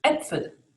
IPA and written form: ˈɛpfəl (Äpfel)